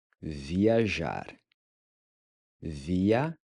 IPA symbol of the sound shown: ʒ